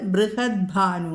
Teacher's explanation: ബൃഹത്ത് ഭാനുഹു മൃദുവായിട്ട് ബൃഹത് ഭാനു എന്ന് വരും. ത മാറിയിട്ട് ദ വരും.